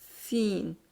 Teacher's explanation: آواز اور سانس دونوں جاری رہتے ہیں اور منہ کے اندر آواز میں ایک قسم کی سیٹی کی سی آواز پیدا ہوتی ہے کیونکہ ظاہر دانت بند ہے تو آواز سیٹی کی سی آئے گی.